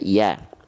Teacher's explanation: kalau dia tetap dibaca dengan vokal A, maka dia adalah huruf yang tipis